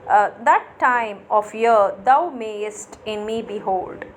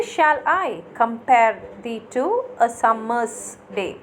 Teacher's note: Now I am meter, in I am meter, the first syllable will be unaccented, that is, we will not give stress for the first sound, but the second sound we will give a stress